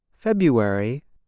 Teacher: the R is not pronounced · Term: American English